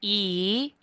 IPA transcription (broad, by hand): i